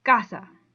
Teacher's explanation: the ka so when you say it you say casa not i'd be putting the stress on the sa which i'm not supposed to do i'm supposed to put it on the ca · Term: spoken stress